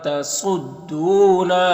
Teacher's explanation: دو میں واو مدہ ہے، یہاں پر نون میں اخفا ہوگا. صاد حروف مستعلیہ میں سے پر پڑھیں گے، یہاں پر واو مدہ ہے اور نا میں الف مدہ ہے.